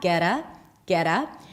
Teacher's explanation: We connect the two words together. The T becomes flat.